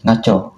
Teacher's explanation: Dalam dialek Melayu Sarawak digugurkan konsonan M dan NG berbanding dalam bahasa Melayu standard. Ini menjadikan sebutannya lebih pendek dan mudah.